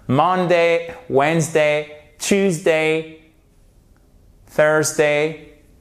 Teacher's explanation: Et vous mettez à chaque fois l'accent tonique sur la première syllabe. · pour les jours de la semaine, toujours sur la première syllabe